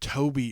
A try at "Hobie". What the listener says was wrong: Did you say Toby? It's an H, not a T. Hobie.